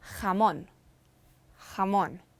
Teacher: J is strong like an English H.